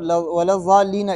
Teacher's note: ولضالین کے اندر یہ لام کو باریک پڑھنا ہے، پہلے والے کو، لو نہیں کرنا ہے۔